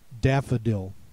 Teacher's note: Note the unaccented schwa sound in the middle of the word is spelled with an O.